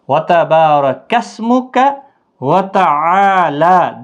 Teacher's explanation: اور کا کو کھینچنا نہیں، سین ساکن کو بھی ہلانا نہیں کیونکہ حروف قلقلہ میں سے نہیں ہے